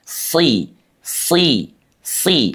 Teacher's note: seluruh permukaan lidah bergerak ke arah langit-langit ya, rapat sehingga terkesan dia tidak mau lepas dari langit-langit. Itu yang dimaksud dengan lengket. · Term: itbaq